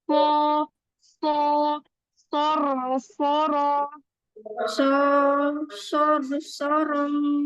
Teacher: Dia pakai ujung lidah yang hampir bertemu dengan gigi di bawah.